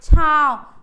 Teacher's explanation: बहुत तेज हमारा मुंह नहीं खुल रहा है और नाक से ज्यादा आवाज आ रही है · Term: अनुनासिक